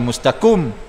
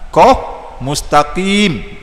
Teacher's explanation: Mereka kata mustaqim, tapi makhraj dia makhraj kaf. Ha, bukan qaf.